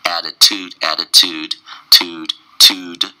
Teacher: So the first T, double T sound sounds like a D, and the second one's more of a soft DT sound together.